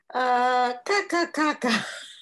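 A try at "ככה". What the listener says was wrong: Kaka, kaka is not a good thing. Kacha. Can you say the cha?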